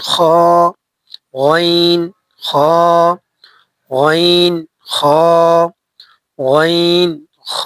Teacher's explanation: তিন নাম্বার মাখরাজ হলকের শেষ হইতে, হলকের শেষ হইতে উচ্চারিত হয়